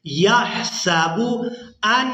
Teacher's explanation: یحسب ان، نون مشدد پر ہم نے کرنا ہے غنہ، یعنی نون کو ادا کرتے ہوئے ہم نے ناک کے اندر کچھ دیر آواز کو چھپا کر رکھنا ہے، اس کو غنہ کہا جاتا ہے.